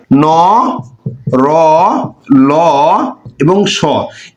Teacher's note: এই ধ্বনিগুলো যেহেতু দন্ত মূল থেকে উচ্চারিত হয় এ কারণে এদের নাম হচ্ছে দন্ত মূলীয়